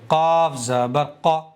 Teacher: زبان کی جڑ اوپر کے تعلق کے نرم حصے سے ملا کر کے اس کو ادا کرنا چاہیے